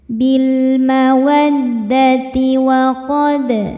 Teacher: Bil mawaddati wa qad, dal hukumnya qalqalah sugro sebab ada huruf qalqalah yaitu dal yang sukunnya ini sukun asli dan ada di tengah bacaan kita. Maka cara bacanya kita pantulkan dalnya dengan pantulan yang kecil.